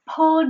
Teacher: When she said pull down pants, she said pull without the aspiration instead of pull.